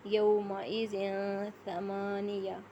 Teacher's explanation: نون کی آواز کو چھپا کے پڑھیں گے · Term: اخفا